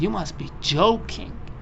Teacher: basically the whole intonation is going up